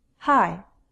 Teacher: This is a glottal sound, which means it's made in our throat. It's as simple as breathing out. We can hear our breath but not our voice. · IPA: /h/